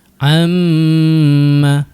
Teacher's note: Ha kita rasa dengung tu dekat rongga hidung kita kan.